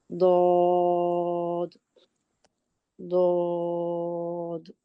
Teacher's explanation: letter pronounced from the side of the tongue, touching the roots of the upper molar, top back teeth mean roots.